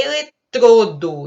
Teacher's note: A gente pronuncia o O fechado